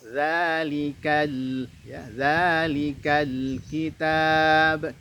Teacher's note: Zalikal tidak boleh. Kemudian lamnya punya sifat tawassut, maka berikan sedikit aliran bunyi huruf lam itu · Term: lam sukun